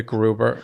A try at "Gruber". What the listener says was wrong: not grubber no that'd be two bees